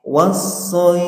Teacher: Kemudian saat membaca shad, lidahnya itu terangkat, ya, terangkat. Untuk sementara bisa dibantu mencucu untuk sementara. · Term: huruf shad